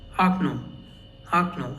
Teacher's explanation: we have two O's and only the last O is stressed. So only the last O is read as O and the first O is read as A.